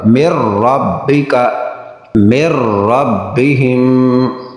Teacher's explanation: نون ساکن کے بعد را ہے، ادغام بغیر غنہ کے